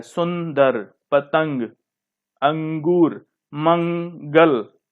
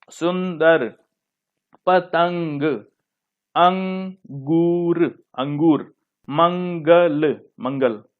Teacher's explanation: इसको जो बोलते हैं, नाक से बोलते हैं अ। जैसे सु, नाक से कुछ निकलता है, नाक से स्वर निकलता है। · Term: अनुस्वार